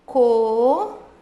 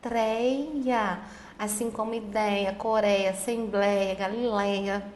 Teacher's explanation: É um ditongo aberto, tá na penúltima sílaba, tinha acento e agora não tem mais.